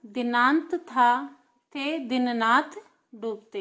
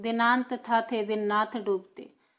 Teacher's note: यहाँ पर द न त थ थ द न थ ये सारे वर्ण क्या हैं दंत्य अक्षर हैं। सारे वर्ण क्या हैं दंत्य अक्षर हैं और एक ही उच्चारण स्थान से बोले जाते हैं, इस कारण हमें सुनने में भी एक जैसे लगते हैं।